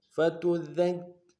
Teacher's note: دال کو کاف کے اوپر تشدید زور دیں گے. فتذکر، اگلے کاف کو نم سے ادا کریں گے، را کو موٹا ادا کریں گے